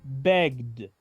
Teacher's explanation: Pronuncio la ED como una letra D y esta E prácticamente queda muda.